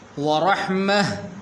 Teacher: حالت وقف کے اندر ہا بن جاتی ہے